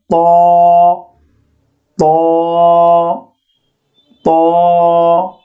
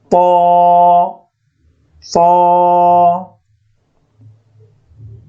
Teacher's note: ত উচ্চারণের নিয়মটি হলো জিহ্বার আগা উপরের দাঁতের গোড়ায় স্পর্শ করুন